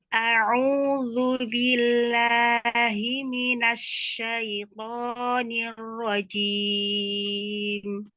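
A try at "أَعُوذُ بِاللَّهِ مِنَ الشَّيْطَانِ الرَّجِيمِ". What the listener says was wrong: Bagus. Ro-nya sedikit lagi Mi lebih takrir. Ar-rajim.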